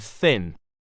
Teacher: voiceless dental non-sibilant fricative